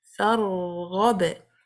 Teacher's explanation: applying tawasut on the ra sakina. Hold it for a while. You have to let the sound continue for rekhawah.